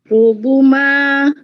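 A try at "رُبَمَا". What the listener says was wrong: Nah, tadi baris yang pertama itu, apa itu Bu? Rubama, bukan rubuma.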